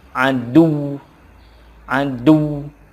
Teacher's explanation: harus ada tekanannya untuk menunjukkan bahwa ujungnya itu ada tasydid